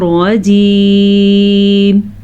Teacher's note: रजीम में रा को पुर यानी कि मोटा करके पढ़ना है